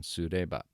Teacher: you hear the ba comes down